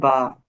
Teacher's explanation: আমরা যখন উচ্চারণ করব তখন দুইটা ঠুট কিন্তু মিলিত থাকবে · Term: দুই ঠুটের